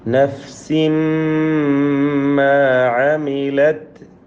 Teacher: കുല്ലു നഫ്സിൻ തൻവീനിനെ മീമിലേക്ക് പൂർണ്ണമായും ലയിപ്പിച്ച് മണിക്കണം.